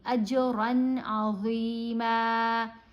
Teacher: اظہار میں نون ساکن ہو یا نون تنوین، اس کو جلدی پڑھا جاتا ہے، صاف پڑھا جاتا ہے، نون کی آواز بہت واضح پڑھی جائے گی. اجرن عظیما، نہ ہم نے ادھر غنہ کرنا ہے نہ ہی اخفا کرنا ہے.